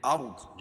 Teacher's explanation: ارض، رائے ساکنہ سے پہلے ذریعہ پیش ہو تو را کو پور پڑھیں گے اور ضاد کو موٹا پڑھیں گے کیونکہ حروف مستعلیہ میں سے ہے